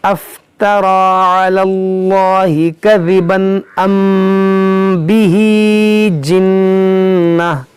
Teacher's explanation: میم ساکن کے بعد یہاں با ہے تو یہاں پر اخفاء شفوی ہوگا، یہاں نون مشدد غنہ ہوگا، گول تا کو ہا ساکنہ بنائیں گے۔